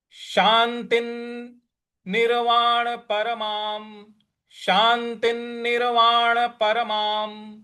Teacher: यहाँ जो माँ के ऊपर जो अनुस्वार है उसके आगे म है तो म का ही उच्चारण लाएंगे।